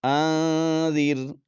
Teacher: آواز ناک میں چھپائیں گے نون کو پڑھتے ہوئے